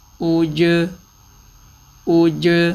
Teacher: اب یہ سارے حرفوں پہ حمزہ کے اوپر آواز تو ہونٹ تو گول ہو رہے ہیں، حمزہ کے بعد جو ساکن حرف آ رہا ہے اس پہ ہونٹ گول نہیں ہو رہے